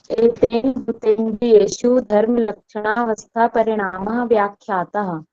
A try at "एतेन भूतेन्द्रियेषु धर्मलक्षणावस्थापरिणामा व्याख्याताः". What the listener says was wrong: Good.